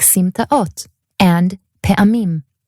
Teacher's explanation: And in those cases, generally, all you're going to do is pronounce both vowels with a small glottal stop in between to help separate the two vowels